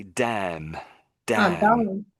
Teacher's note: So the N is almost silent, in a way.